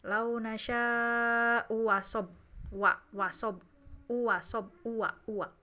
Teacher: diibdal bisa dengan langsung jadi wawu ya, hamzah kedua jadi wawu